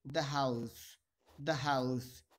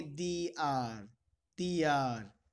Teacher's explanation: इसमें H silent की मुद्रा में है, मतलब यहाँ पर एच को हम बोलेंगे नहीं। जब एच को नहीं बोलेंगे तो हम ओ से इस वर्ड को स्टार्ट करेंगे और इस कंडीशन में ये हमारा वोवल हो जाएगा, तो हम इसे बोलेंगे दी आर।